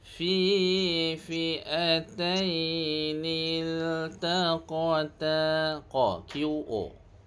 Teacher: Tebalkan sedikit pada huruf qaf bersifat isti'la